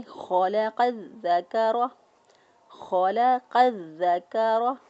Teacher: خو جو ہے اس کو بھی پر پڑھیں گے، قاف کو بھی پر پڑھیں گے، لام کو نارمل ادا کریں گے